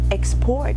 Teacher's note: when we hear the word export that is being stressed on the second syllable